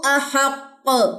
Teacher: strongest کلکلہ ہوا ہے کیونکہ 2 قاف تھے یہاں پہ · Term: کلکلہ کبرا